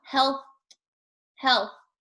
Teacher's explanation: other part that is difficult is the th this th sound your tongue is going to be farther farther forward in your mouth than you're used to the th should come between your teeth